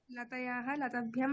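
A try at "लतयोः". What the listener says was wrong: হ্যাঁ, ষষ্ঠী এবং সপ্তমী দ্বিবচনের উচ্চারণটা হচ্ছে না, লতায়োহ অন্তস্থ, তারপরে ওকার। লতায়াহ এরকম হয়ে যাচ্ছে, দেবায়োহ যেমন হচ্ছে লতায়োহ।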